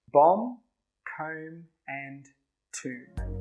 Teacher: All of them have a silent b but the pronunciation of the vowel is a little bit different.